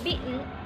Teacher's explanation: Kebanyakan American dan British speaker ketika mengucapkan t dalam kata beaten ini itu diikuti dengan glottal stop